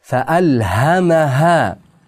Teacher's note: Mim harfni fathasini aniq bildiramiz, keyingi ham ha degan aniq bildiramiz, undan keyin ikki harakat miqdori cho'zamiz.